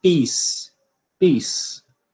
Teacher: a gente não alonga essa vogal né E a gente não faz a aspiração do pó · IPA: pi:s